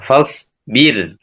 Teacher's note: Maka ra-nya di sini dibaca dengan tarqiq.